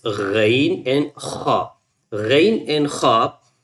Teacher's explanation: The part of the throat which near to the mouth, that you can pronounce Ghain and Kha. Ghain and Kha, both you can pronounce from the upper throat. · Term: upper throttle letters